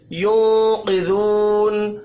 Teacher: नून साकिन के बाद कौफ है, इख्फा हकीकी होगा, कौफ को पुर पढ़ेंगे। जू वाव मद्दा है, एक अलिफ के बराबर खींच कर पढ़ना है।